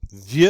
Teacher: Of course, we don't pronounce that final X.